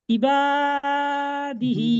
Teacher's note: দালের নিচে জের আছে, জেরটি হলো হারাকাত, হারাকাতে পড়া তাড়াতাড়ি পড়তে হয়, টান দেওয়া নিষেধ। হার নিচে জের আছে, খাড়া জের আছে, জেরটি হলো ইয়া মাদ্দার সমতুল্য, একে এক আলিফ পরিমাণ টান দিয়ে পড়তে হয়